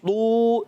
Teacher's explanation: اب تو واو پیش تو، یہ واو مدہ ہو گیا، ایک الف کو کھینچنا ہے